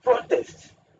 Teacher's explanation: you have the stress on the first syllable